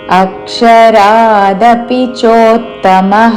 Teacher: ఆ మీద ఆఘాత అక్షరా దీర్ఘము దపి దపి రస్వములు అక్షరాదపి చోత్తమః చో పక్కన తకి తవద్దు చోత్తమః అక్షరాదపి